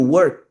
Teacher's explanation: Como a última letra do verbo work, ela não usa corda vocal, ela é unvoiced. Ela é uma letra muda.